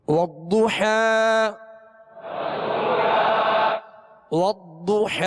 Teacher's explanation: ضاد پر پیش ہے ہونٹوں کو گول کر کے پڑھیں گے اور ضاد کو پر پڑھیں گے اس لیے کہ حروف مستعلیہ میں سے ہے اور والضحى ہا